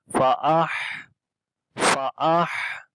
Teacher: ہا کے اوپر صفت حمز ہے, سانس جاری ہوگا. فَأَحْ فَأَحْ, اور ہا کو آخر میں لمبا کریں گے, ہا کے نیچے کھڑی زیر ہے.